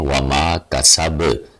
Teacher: با کی آواز کو ابھار کے پڑھیں گے کیونکہ اس کے اوپر قلقلہ ہے، تو اس کو پورا پڑھیں گے۔